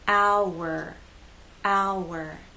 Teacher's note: the sounds connect with the help of the W sound